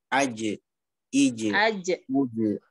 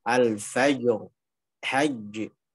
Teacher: Jadi dia tidak ada aliran suara ataupun nafas yang berlebih sebagaimana terjadi pada huruf-huruf hams seperti sin, seperti shin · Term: jim